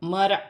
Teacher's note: یا را ساکن سے پہلے زبر ہے تو را موٹی پڑھی جائے گی